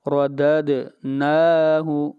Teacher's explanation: نون کو لمبا کریں گے، نون کے اوپر کھڑی زبر ہے، ایک الف کے برابر مد اصلی ہے